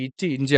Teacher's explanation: இச்சு, இஞ்சு அப்படிங்கிறது நாவின் இடையில், அன்னத்தின் இடையில் வந்து வரக்கூடியது